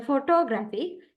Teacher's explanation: In here, primary stress on gra and secondary stress is on for.